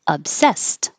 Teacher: Obsessed looks like ED, sounds like T.